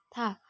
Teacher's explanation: Perhatikan ta, jadi melafalkan huruf ta tidak menyentuh ujung lidah dengan gigi atau dengan langit-langit, tetapi huruf ta menyentuhkan ujung lisan dengan gusi atau tempat tumbuhnya dua gigi seri bagian atas